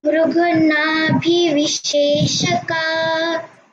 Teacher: Only thing, don't stop at nabhi. It will become dirgha. So say nabhivisheshaka.